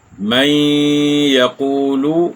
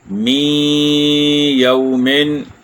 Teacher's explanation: یہاں نون ساکن کے بعد یا ہے، تو یہاں ادغام مع الغنہ ہے، ایک الف یا 2 حرکات کی مقدار ہم نے اس کو لمبا کیا۔